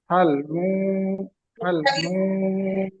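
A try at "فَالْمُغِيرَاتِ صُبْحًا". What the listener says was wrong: ফাল মু, ওই যে ভুলটা হয়ে গেল, আমি যেটা বলেছিলাম, যে এখানে মু টান দিয়েন, দিয়ে ফেলেন ছাত্ররা। দ্বিতীয় মু এখানে টান নেই, মিম পেশ মুহারাকাত। ফাল মুগি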